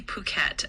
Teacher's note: It's pronounced kind of like puket with the stress on the second syllable.